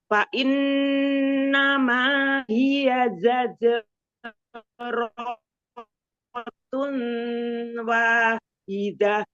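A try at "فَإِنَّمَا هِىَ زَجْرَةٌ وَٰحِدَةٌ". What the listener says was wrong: Idgham biguna, bukan idhar. Zajaratu wahidah.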